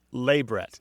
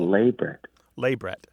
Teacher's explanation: stress on the first syllable